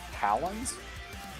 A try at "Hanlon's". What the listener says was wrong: No, there's an N in there. It's Halnot.